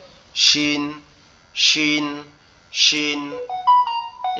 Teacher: জিহ্বার মধ্যখান উপরের তালুর সঙ্গে লাগবে, লেগে উচ্চারিত হবে